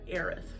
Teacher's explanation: it has a very breathy sound at the end